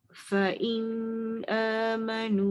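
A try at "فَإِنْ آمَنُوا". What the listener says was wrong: Fa'in tak dengung. Yang ada tanda mati tak dengung.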